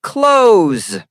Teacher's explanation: That th sound doesn't exist. We simply say clothes.